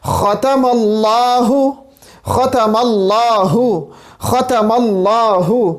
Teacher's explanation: ابتدا میں ہم جو خا ہے اور وہ ہمارے پاس ادنا حلق سے ادا ہو رہے ہیں، لاسٹ میں ہا ہے، پھر حلق کے ابتدا سے جو کہ منہ کی طرف سے، منہ کی طرف ہے، وہاں سے ہم ٹرانسفر ہو رہے ہیں یہاں پہ حلق کے آخری حصے کی طرف جو کہ ہمارے سینے کی طرف ہے۔